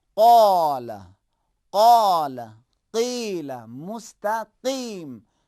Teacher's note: لیکن قاف کو بھاری تلفظ کرنا ہے